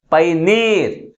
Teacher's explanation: last syllable is pronounced with a greater force comparing with other one. That's why the primary stress is on the last syllable.